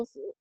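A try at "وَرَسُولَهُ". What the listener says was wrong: Waro, waro. tadi salahnya waru-waru aja. Waro.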